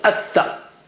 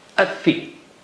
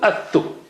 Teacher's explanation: So Lam is sacrificed in all these cases, and you just jump to help Shadda. No sign, no sound.